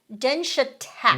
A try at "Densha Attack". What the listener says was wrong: All one word. Yes, shared A.